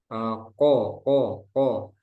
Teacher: Kofnya jangan sampai ada udara nanti.